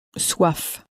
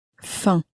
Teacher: the F on the end of soif was very clearly pronounced, but the M on the end of faim was not pronounced, at least not clearly. Perhaps very nasally it exists, but it's not pronounced clearly.